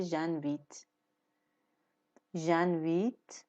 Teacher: انویته یعنی دعوت کردن که اینجا صرف شده انویت، و چون جو انویت دو تا حرف وایل به هم میخوره، جو او میفته میشه ژنویت